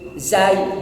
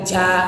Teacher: kalau zai dari torful lisan, ujung lidah. Sementara ja dari wastul lisan, dari pertengahan lidah.